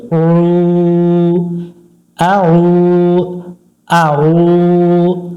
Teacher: আইন ওয়া পেশ পেশের বামে ওয়াও সাকিন এক আলিফ টানতে হয় এখানে এক আলিফ টান দিব গলা চেপে